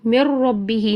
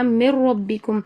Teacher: تو نون جو ہے یہاں پر پوری طرح را میں داخل ہو جاتا ہے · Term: ادغام بلا غنہ